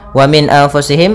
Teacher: ada nun sukun bertemu dengan hamzah maka ini kita namakan dengan izhar halqi